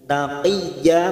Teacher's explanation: Taqiyya masuk ke huruf ya yang bertasdid, hanya masuk tanpa mendengung.